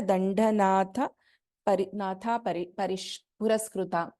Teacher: Tha is a Mahaprana.